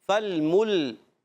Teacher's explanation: یہاں میم کو لام سے ملانا ہے، لام کو پھر ہلائیں گے نہیں، ہونٹ گول ہو جائیں گے